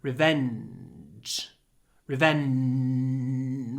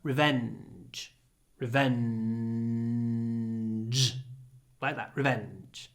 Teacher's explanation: try to have a nice long n in this word Revenge Revenge we stay on the N